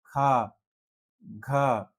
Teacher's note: महाप्राण, जिनमें ज्यादा वायु निकलती है